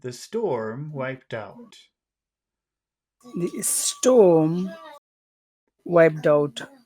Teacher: this is where I think we have to do a falling tone because storm is at the beginning of the phrase but it's also our most important word